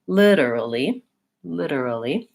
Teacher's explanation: the syllable stress in this word is on the first syllable. So lit is going to be longer, maybe higher in pitch, and more important than early. 4 syllables in this word.